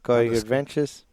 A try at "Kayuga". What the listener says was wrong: There's no R in that, folks. Kayuga. Kayuga Adventures.